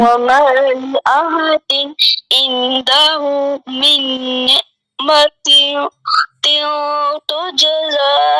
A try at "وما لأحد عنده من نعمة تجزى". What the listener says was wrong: You are not pronouncing the ayn sakin properly. من نعمة تجزى. You are doing kalkala. That's also wrong. Min, first the noon sound would be exactly clear as min ni'matin. Noon ayn zer ni' ma mim zabar ma ni'ma.